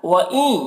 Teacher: ادغام ناقص ہو رہا، نون کو یا سے ملا کر غنہ کے ساتھ میں پڑھیں گے